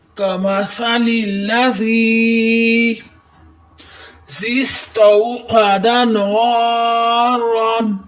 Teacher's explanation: کمثل الذی استوقد نارا، سین کو سیٹی کی آواز دیں، تا کو ویسے ہی پڑھیں جیسے ہم حروف توجیہ میں پڑھتے ہیں۔ قاف کو قلقلہ کی آواز دیں، موٹا کریں، نا پر الف مدہ کریں اور را کو موٹا کریں۔ یہ جیم وقف جائز کی علامت ہے، یہاں ٹھہرنا بہتر اور نہ ٹھہرنا لازم ہے۔